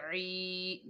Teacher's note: आइन के नीचे ज़ेर है, आगे या साकिन है, ये या मद्दा है, एक अलिफ की मिकदार खींच कर पढ़ेंगे